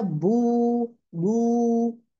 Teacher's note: होठों को गोल करेंगे, देखिए होठों को गोल करना जरूरी है।